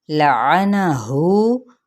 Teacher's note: वाव मद्दा यानी उसका कायम मुकाम है तो इसको एक अलिफ या फिर 2 हरकत खींचेंगे। कितना, हु, बस इतना, हु नहीं और हु इतना ज़्यादा भी नहीं।